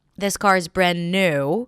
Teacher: this car is brand new - stress on 'new' - last content word of that phrase.